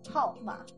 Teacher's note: In the fourth tone, hao ma means number.